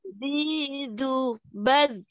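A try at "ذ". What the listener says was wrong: Ah, kan ternyata terlalu banyak nyentuhnya itu. Coba diulang. Bal, ya. Za, zi, lu, bal. Ada aliran nafas yang ikut. Bal.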